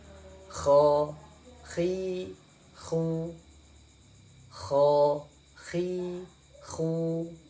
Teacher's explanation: Kemudian huruf berikutnya yaitu huruf kha, ya. Huruf kha ini ada di ujung tenggorokan